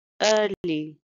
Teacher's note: It's a two-syllable word and stress is on the first syllable.